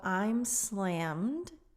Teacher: The M goes straight into the D sound.